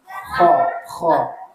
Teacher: seperti orang akan membuang dahak itulah tempatnya bunyi huruf k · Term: huruf kho